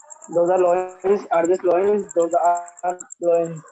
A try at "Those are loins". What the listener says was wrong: Loins. Loins. S important है. थोड़ा सा pronounce करना है उसको थोड़ा तगड़ा. Loins.